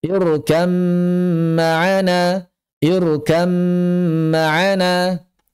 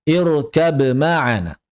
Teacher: Jadi bnya hilang langsung masuk ke dalam mim kan. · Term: idgham, idgham kamil